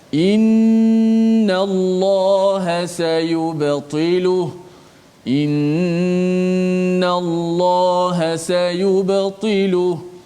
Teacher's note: nun musyaddadah, maka kita kena bacanya dengan dengung, dengan kadar 2 harakat